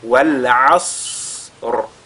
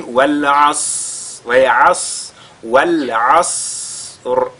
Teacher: le Sad, il a la caractéristique de Al-Hams. C'est-à-dire il y a l'écoulement de l'air qui se produit au moment de sa prononciation. Ce qui nous permettra d'allonger, n'est-ce pas, sa prononciation avant de lire la lettre Ra.